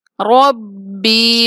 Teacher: با کے آگے یا مدہ ہے، اس لیے با کو تھوڑا سا کھینچیں گے 1 سے 2 الف کے برابر